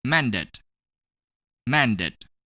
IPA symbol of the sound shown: id